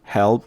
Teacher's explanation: help P자 없애버리고 L은 아래 내리고